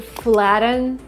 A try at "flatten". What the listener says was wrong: It's not correct to say flatten. But the syllable after the letter T is not stressed. Because we have a special rule. In English, we have these words, and they all contain T-E-N or T-O-N. For example, kitten, mitten, written, cotton, button, flatten.